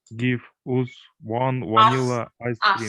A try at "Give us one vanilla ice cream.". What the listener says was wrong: Us. Give us. Читается а. Give us one vanilla ice cream.